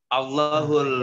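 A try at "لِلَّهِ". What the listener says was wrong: Bukan Allah. Bukan Allah, itu tidak ada alif di depannya. Lillahi.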